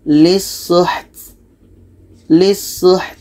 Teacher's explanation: Ta ini hamas, ada anginnya.